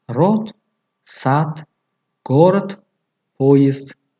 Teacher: дар охири калима д чун т талаффуз мешавад